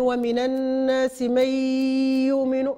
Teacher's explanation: النون ضغمت في الياء وعطاتها الغنة